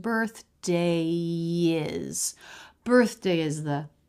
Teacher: So is and the said quickly, no skips or breaks, just part of that same line.